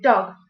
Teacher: The tongue is low and the lips are also rounded.